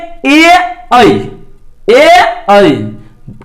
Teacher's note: उसे कंठ तालव्य वर्ण कहती है। जैसे ए ऐ, कंठ से आवाज निकला और तालु के मदद से उच्चारण हुआ, अर्थात इसको कंठ तालव्य वर्ण कहती हैं।